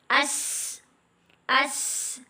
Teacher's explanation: زبان کی نوک اور مقابل دو دانتوں اندرونی حصے سے ادا ہوتا ہے. زبان کی نوک اور مقابل دو دانتوں اندرونی حصے سے ادا ہوتا ہے. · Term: حروف صفیر